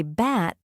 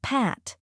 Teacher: Both are made with your lips closed, but P has a stronger burst of air.